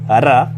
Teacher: र प्र कंपित ध्वनि है। इनके इसके उच्चारण में जीभ लुढ़कती हुई कंपन उत्पन्न करती है।